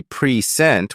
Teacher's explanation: video another commonly used example is present when you say preent with the stress on the first syllable it means a gift